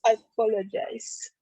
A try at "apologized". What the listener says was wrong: Yes, apologized is like a D sound.